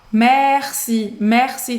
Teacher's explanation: esse R, ele é um pouco mais carregado do que o nosso R